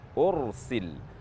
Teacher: Pada kata ursil, huruf ra bersukun dan huruf yang terletak di sebelumnya berharakat dhammah, maka huruf ra dibaca tafkhim.